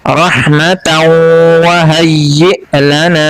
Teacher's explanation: یہاں پر یا کے بعد جو یا ہے اس کو نہیں ادا کریں گے بلکہ حمزہ کو ادا کریں گے جو کہ ساکن ہے, اور یہاں پہ جھٹکے سے ادا کریں گے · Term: حمزہ ساکن